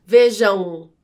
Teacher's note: a m no final da palavra é considerado um ditongo nasal porque é como se tivesse o som de u